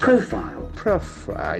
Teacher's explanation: Can see that accent falls on the first syllable.